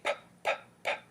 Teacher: you'll notice that your vocal cords do not vibrate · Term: voiceless bilabial stop